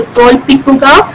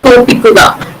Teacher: Here the consonant l gets deleted, and also, as we said earlier, the word final onset deletion is also happening here in this example. Here the first consonant in the consonant cluster l gets deleted. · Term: cluster simplification